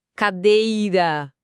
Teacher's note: O dei que se estica. Paroxítona.